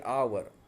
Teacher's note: The first initial consonant H is not pronounced. H is silent.